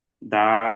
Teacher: আলিফ মাদ্দাকে একালিফ পরিমাণ টান দিয়ে পড়তে হবে